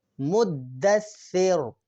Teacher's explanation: را کو ہم موٹا یعنی منہ پر کر کے پڑھیں گے